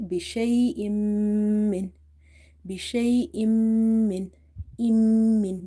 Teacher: So here is with ghunna, so you have to say bishay'im min, bishay'im min, min. This holding of the meme sound and taking the sound into the nose is called nasalization or ghunna. Okay, and your tongue is touching the upper palate.